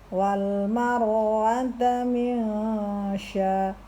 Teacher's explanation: nun sukun bertemu dengan huruf shin dibaca ikhfa atau samar. Cara samar itu adalah sukunkan dulu kepada huruf nun min, lalu segera masuk kepada huruf shin sya ya.